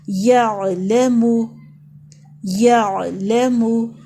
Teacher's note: لا کو اوپر زبر ہے، زیادہ لمبا نہیں کریں گے، صرف ایک حرکت پڑھیں گے۔